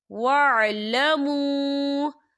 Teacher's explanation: یہاں پر واو مدہ بھی ہو رہا ہے اور اس پر مد بھی ہے تو ہم اسے 4 حرکت کے برابر کھینچیں گے